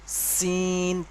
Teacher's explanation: আকৃতিটা দেখুন এটা হল সিন তিন আলিফ পরিমাণ টান হবে এইটা উচ্চারণ করার সময় যেমন সিটি সিটি মত একটা আওয়াজ হয়